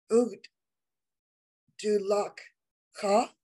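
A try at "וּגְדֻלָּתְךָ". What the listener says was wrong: Yes, ug du lat ha, because that shva doesn't get its own syllable. Ug du lat ha.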